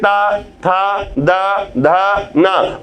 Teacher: जिह्वा आपके दांतों को स्पर्श करेगी, तो दांत के स्पर्श से उच्चारण हो रहा है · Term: दंत ध्वनि